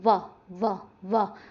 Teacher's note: दांत आगे लग रहे होठों पे आके तो ध्यान ध्यान रखिएगा दंतोष्ठ है।